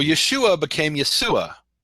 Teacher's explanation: in Greek there's no sh sound